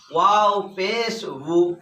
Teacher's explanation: উ উ আর ই এ পড়া যাবে না, ভু একটা মোটা হবে। ওয়াও পেশে আর জেরে ওয়াওটা মোটা উচ্চারণ হয়।